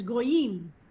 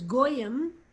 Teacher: modern Hebrew puts the emphasis on the final syllable, and Yiddish and English put the emphasis on the first syllable.